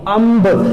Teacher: ਅੱਧਾ ਮੰਮਾ ਵੀ ਤੇ ਨੱਕ ਦੇ ਵਿੱਚੋਂ ਆਵਾਜ਼ ਵੀ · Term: ਨਾਸਕੀ ਪ੍ਰਗਟਾ